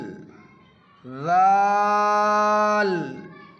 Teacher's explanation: ذال کو بھی ثا کی طرح نارمل نکالیں گے، یعنی زبان کی نوک تھوڑی سی باہر نکال کے اوپر کے چوڑے والے دانت میں ٹچ کریں گے زبان کی نوک کو